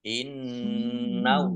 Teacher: Ditahan ya, biar mendengung ditahan. Innallaha, Allahnya dibaca tebal karena harokat di depannya fathah. Lam fathah berdiri mat tobi'i.